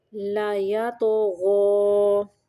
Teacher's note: تو کو قلقلہ کریں گے اور غین کو موٹا پڑھیں گے